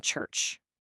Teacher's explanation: They start with an explosion and end with friction, like that ch sound in church.